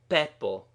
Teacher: with a strong explosive sound attached to the first letter